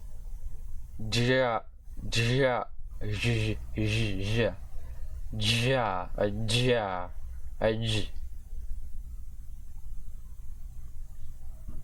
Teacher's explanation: the voiced alveolo-palatal sibilant affricate consonant, and technically with an alveolar stop